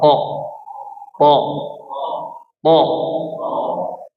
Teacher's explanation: Ah thnya ditebalin sempurna ya.